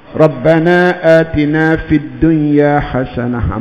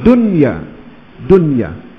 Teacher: Izhar mutlak ni maknanya memang kena jelas bunyi nun tu. Betul-betul kena tunjukkan bunyi nun tu.